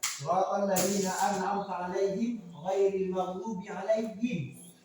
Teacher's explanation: Wajib membunyikan bunyi mim yang jelas. Mim mati itu jelas. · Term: izhar syafawi